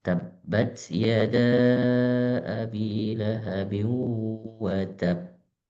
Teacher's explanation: Qalqalah yang paling besar. Karena ada tasydidnya, jadi ketika dibaca ada space sebentar kemudian baru di keluarkan pantulannya. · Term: qalqalah akbar